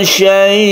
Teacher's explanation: Jadi sukun hamzahnya harus ketara, harus terlihat, terdengar ya.